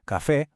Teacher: Café con una e abierta, más relajada